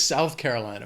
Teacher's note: These words together have 5 syllables, but the stress is going to be on that second word, that Carolina, that third syllable.